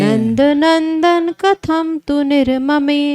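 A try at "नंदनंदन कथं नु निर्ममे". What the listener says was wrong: तू कहाँ है भाई, नू है, नू है। नंदनंदन कथम नु निर्ममे।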